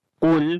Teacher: قاف موٹا پڑھیں گے، حروف استعلا میں سے ہے